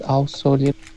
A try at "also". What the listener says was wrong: Also, I do also, all, instead of ow, all, also.